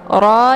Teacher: karena harokatnya fathah maka dibacanya tebal ya tafkhim